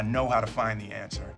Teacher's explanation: he drops the D on find · we have the two reduces to a schwa sound so it becomes ta